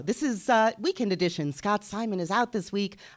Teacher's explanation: my soft palate is lifted, and I don't sound so nasal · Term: radio voice